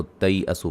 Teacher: تا کو یا سے ملائیں گے، یا لین بن جائے گی